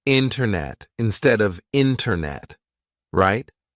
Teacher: Usually, if the T comes after an N, we drop that T and we do not pronounce it. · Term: silent T